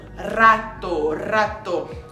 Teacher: vibrando no céu da boca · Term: R forte